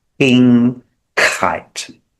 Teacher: So when we say king, you'll notice the air that comes out.